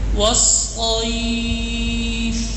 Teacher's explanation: ایف آواز تو بند ہوگی لیکن سانس چل رہا ہے. والصیف ذرا سا، ٹھیک ہے نا، کیونکہ صفات لازمہ کی جو صفت ہے ہمس وہ اس میں آ گئی ہے.